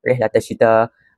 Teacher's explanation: lam itu tidak didengari tapi diganti dengan huruf syin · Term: alif lam syamsiah